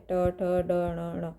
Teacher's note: इसमें जीवा तालु से लगती है, तालव्य कहते हैं। और ट वर्ग में मूर्धन, जिसमें जीवा मुख के ऊपर के भाग से लगती है, इसलिए इन्हें मूर्धन्य कहते हैं